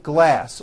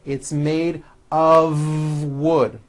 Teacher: even though the word of is spelled with an F we pronounce the of with a voiced v